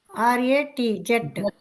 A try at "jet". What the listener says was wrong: జెట్. జెట్ అంటున్నా, నువ్వు చెప్పింది సెట్.